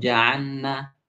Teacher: Jadi seakan-akan bunyi lam itu seperti bunyi nun